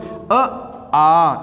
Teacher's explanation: अ, छोटा आ और बड़ा आ, इसका उच्चारण स्थान कंठ।